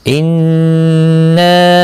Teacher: انا نون مشدد پر غنہ ہوگا، نا مد منفصل ہے، 3 الف کے برابر کھینچ کر پڑھیں گے